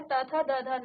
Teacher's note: त थ द ध न आपके दांतों से निकलती है, यानी कि आपके दांत से स्पर्श करता है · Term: दंत्य